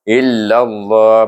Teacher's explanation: Illallah, baca nama dengan tebal, nama Allah dengan tebal, sebab sebelumnya baris di atas illallah dengan idgham syamsi, masukkan lam kepada lam